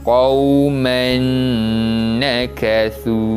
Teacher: memasukkan bunyi bacaan tanwin pada huruf selepasnya dan dibaca dengan bacaan dengung